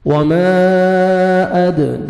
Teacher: دال ساکن آئے گا، قلقلہ کریں گے